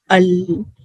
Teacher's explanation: ال آپ کہیں گے نا، آپ ٹچ کیجئے آپ کی جو زبان کی جو سائڈ ہے، حافۃ اللسان جسے کہتے ہیں ہم سائڈ کو، وہ اوپر ٹچ ہوگی، پری مولار تک کے دانتوں کے جو گمز ہے نا اس کے رج کو ٹچ ہوگی، وہاں سے لام ادا ہوگا، ال. · اوپر سے فل بلاک کر کے نا سائیڈ میں، دونوں سائیڈ میں تھوڑی جگہ رہ جائے گی، ہوا جائے گی وہاں سے. تو وہ جو ہوا خارج ہوگی نا وہاں سے لام ادا ہوگا.